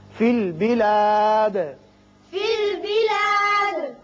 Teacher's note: دال پر قلقلہ کریں گے، اس لیے کہ یہ وقت کی وجہ سے ساکن ہو رہا ہے